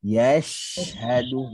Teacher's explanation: makhraj, tengah-tengah lidah, jumpa langit-langit atas, gigi-gigi rapat, kemudian dan bawa ke arah senyum. · Kemudian Shin apabila dia mati, maka ada hams dan rohawah. Lepasan suara dan angin yang panjang.